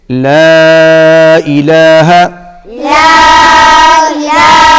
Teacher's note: لا کے اوپر پھر چھوٹی مد ہے، اس کو بھی کھینچ کر پڑھیں گے